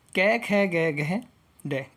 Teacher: जो क वर्ग में आएगा वो कंठ से आवाज़ देता है